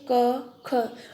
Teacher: इनमें जो कार्य हो रहा है वो हमारा जिह्वा का जो मूल है वो कार्य कर रहा है, इसलिए इनको जिह्वा मूलम कहा जाता है।